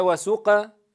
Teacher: the letter Qof (ق) has isti'la properties that is, the sound is raised towards the upper palate then we say: "wa suq.." (bold) and not: "wa suq.." (thin)